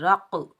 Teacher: قاف حروف کلکلہ میں سے بھی ساکن حالت میں آ رہا ہے تو یہاں ہم کلکلہ کریں گے، ڈبل ساؤنڈ آئے گا، ٹکراؤ پیدا ہوگا